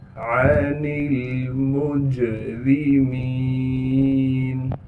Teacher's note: आइन को साफ करके गले से निकालना है। नून को आगे लाम साकिन से मिला देंगे। · मीम को जीम से मिलाना है क्योंकि जीम साकिन है। जीम पर क़लक़ला किया जाएगा यानी आवाज़ को हिलाएंगे।